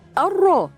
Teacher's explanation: لام شمسيه مضغه في الراء المتحركه بالفتح